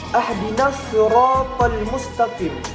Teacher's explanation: ada huruf shad jelas dibaca dengan tafkhim